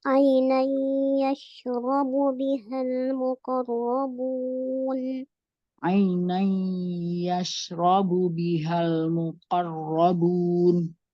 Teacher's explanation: Dengan dengung ya. Iya, dileburkan dengan dengung karena dia idgham Idgham bigunnah.